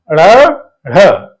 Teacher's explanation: इनमें जो हमारी जीवा होती है वो एकदम ऊपर तालू का स्पर्श करती है और झटके के साथ में नीचे आती है तो पहले ऊपर उठती है फिर छिप नीचे आती है इसलिए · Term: उत्क्षिप्त व्यंजन